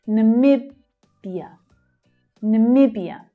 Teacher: Can you hear that second syllable is the stressed one?